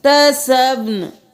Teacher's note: یہاں پر ہم وقف کریں گے تو نون کی صرف آواز آئے گی